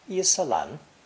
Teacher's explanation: mandarin does not have any syllable ending in an m sound so lan is used instead